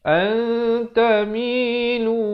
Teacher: Asalnya antamilu, jadi baca bunyi nun pun tidak, bunyi ta pun tidak, jadi bunyi tengah-tengah itu. 2 harakat. Antamilu mailan. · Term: ikhfa hakiki